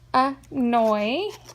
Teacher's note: I can hear oi in the second syllable.